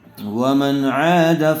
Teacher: نون ساکن کے بعد حروف حلقی میں سے عین آیا ہوا ہے اس لیے بغیر غننے کے جلد اظہار کر کے پڑھیں گے